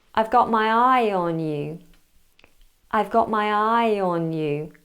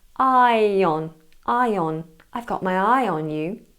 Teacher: the intrusive y is coming between I and on